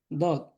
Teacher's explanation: জিহ্বার গোড়ার কিনারা উপরে মারি দাঁতের গোড়ার সঙ্গে লাগা, দদ উচ্চারণ হবে।